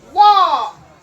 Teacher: Now in the word walk, you do not hear the L. The L is silent, because before K, if the L comes before K in the word, then the L is silent.